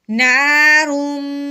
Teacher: منہ بند کر کے آواز ناک میں سے نکالنی ہے کیونکہ یہ میم کا غنہ ہے